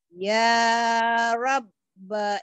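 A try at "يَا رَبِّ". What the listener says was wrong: Ya Rabbi. Rabbi bukan ya Robba. B-nya pendek.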